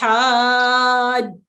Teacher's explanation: جب آپ اس کو پڑھیں گے مد کو، تو پہلے اس کو ہم لمبا کریں گے اور اس کے بعد مشدد حرف پہ ہم اس کی آواز مضبوطی سے پکڑ کے روک کے پھر ہم پڑھتے ہیں. حاجوک، ہا کو لمبا کھینچیں اور اس کے بعد جیم پہ آواز ٹھہرائیں کیونکہ یہ مشدد ہے اور اس کو مضبوطی سے پکڑنا ہے اور اس کے بعد اس کو پڑھا جائے گا. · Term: مد لازم